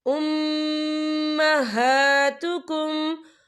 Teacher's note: हा के पर खड़ी हरकत है, तो हम इसे 2 या 3 हरकत के बराबर खींच के पढ़ेंगे।